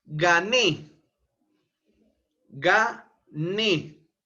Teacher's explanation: la sílaba tónica está en Ne es una palabra aguda el mayor impulso de voz se encuentra a nivel de la sílaba última Ne y como termina en vocal e